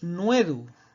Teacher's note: esa O breve tónica de nodus diptonga en nuedu